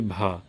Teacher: भा यह स्पर्श घोष भी है, महाप्राण भी है और ओष्ठ व्यंजन भी है